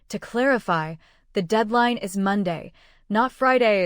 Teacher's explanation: Say it with clear stress on Monday.